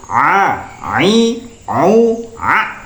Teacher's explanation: tengah tenggorokan jadi tenggorokan bagian tengah dan ini merupakan makhraj huruf Ain ya makhraj huruf Ain jadi a u a ya a u